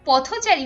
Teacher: তখন কিন্তু ও কারান্ত উচ্চারিত হচ্ছে অর্থাৎ থ এর সাথে একটা ও যুক্ত হচ্ছে